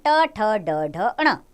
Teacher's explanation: ट वर्ग में आते हैं व्यंजन ट ठ ड ढ ण। मूर्धन्य इनका उच्चारण स्थान है।